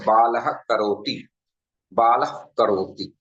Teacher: एक हल्का सा फ जैसा या प जैसा वर्ण उच्चारित होता है छोटा सा बाल करो इसको जिवा मूल उपमान नाम से जाना